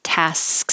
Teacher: while I'm making my S, my tongue goes up for my K. Tasks, and just quickly makes a k. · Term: SKS combination